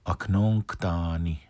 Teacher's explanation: So this one isn't nook. If it was a regular O, it would say nook. Because it's a nasal O.